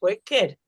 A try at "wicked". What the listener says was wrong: No, wicked. We see the I and we want to say it the normal.